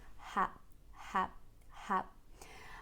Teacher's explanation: lips are spread the jaw is dropped ha ha ha and the first sound is just a very light out breath make sure that you don't use your tongue the back of your tongue to say it · the mouth is very widely open so the lips are spread the jaw is dropped